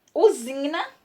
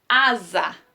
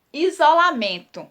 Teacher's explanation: nessas palavras o s tem som de z